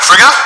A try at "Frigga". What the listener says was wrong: It's an extra syllable in there. She's not Italian. She's Norwegian.